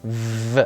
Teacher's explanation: consonantes labiodentales, por ejemplo, como la V, en las cuales los órganos que se aproximan son los dientes y los labios.